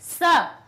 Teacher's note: दांत से टकरा के निकलती है ध्वनि